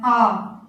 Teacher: विपरीत इनका उच्चारण करते हैं तो हमारा मुख पूरी तरह से क्या होता है, खुला रहता है। आ, जब आ बोलते हैं तो मुख हमारा पूरी तरफ से क्या होता है, खुल जाता है, थोड़ा भी बंद नहीं रहता है।